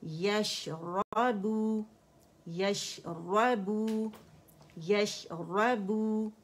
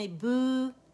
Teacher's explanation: بو کر کے نہیں موٹا کرنا کیونکہ با سافٹ لیٹر ہے